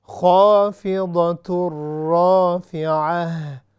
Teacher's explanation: خا جو ہے ہیوی ہے، اس کا جو ساؤنڈ ہے حروف مستعلیہ میں سے ہے، لہٰذا ہم اس کو موٹا کر کے پڑھیں گے